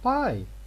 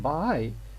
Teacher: P is fully voiceless, but B is partially voiceless in here, because we begin voicing only by the end of its production